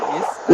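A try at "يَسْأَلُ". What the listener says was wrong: ഒരു ഐനിലേക്ക് പോകുന്നുണ്ടോ എന്ന് സംശയമുണ്ട്.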